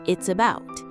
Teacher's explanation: Here the ending s in its connects smoothly to the vowel uh at the start of about. So instead of hearing two separate words, it sounds like it's about. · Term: linking